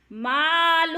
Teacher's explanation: ہو پہ وہ الٹا پیش ہے، الٹا پیش بھی حروف مدہ کا قائم مقام ہے، کھینچ کر پڑھیں گے